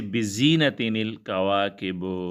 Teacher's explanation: تنوین کے سبب پیدا ہونے والے نون کو کسرہ دیں گے